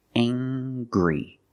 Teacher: We use the nasal sound, plus the hard G.